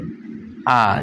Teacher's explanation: নিম্ন বিবৃত সরধ্বনি হচ্ছে আ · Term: নিম্ন বিবৃত স্বরধ্বনি